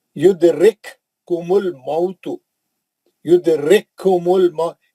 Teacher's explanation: एक काफ साकिन है, एक काफ मुशद्दद है, लेकिन हम मुशद्दद काफ से ही पढ़ेंगे